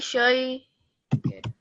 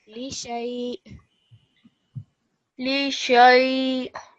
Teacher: You just want to have like a slight jerk on the end because of the sukoon on the hamza.